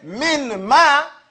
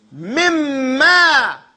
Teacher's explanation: And the noon sound gets eaten up. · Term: idgham